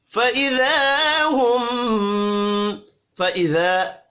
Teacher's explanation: फ़इज़ा अलिफ मद्दा है, एक अलिफ के बराबर खींच कर पढ़ेंगे। हुम मीम मुशद्दद पर गुन्ना करना है।